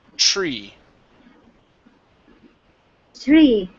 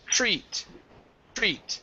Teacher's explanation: your TR is pronounced like a CHR